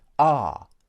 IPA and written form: ɑː (are)